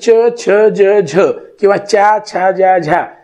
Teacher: पुढच्या टाळूला जिभेचं टोक लागलेलं असतं आणि त्याच्यातून तो उच्चार झालेला असतो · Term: अग्र तालव्य